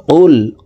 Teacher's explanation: কুল আউযু, কফ লাম পেশ কুল। কফ হরফের উচ্চারণ জিহ্বার গোড়া তার বরাবর উপরের তালুর সঙ্গে লাগাইয়া উচ্চারণ করে পড়তে হবে